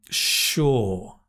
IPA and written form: ʃɔː (sure)